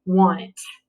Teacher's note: it changes the a sound to a short o sound